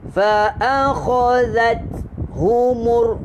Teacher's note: huruf ta bukan huruf lantunan, dia keluar angin saja. Jadi bunyinya situ fa akhazat humur.